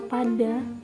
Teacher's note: Pada kata padi atau pada kita tuh enggak ada merasakan getarannya.